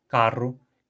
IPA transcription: karʊ